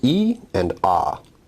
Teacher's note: e is an example of a high vowel and ah is an example of a low vowel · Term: height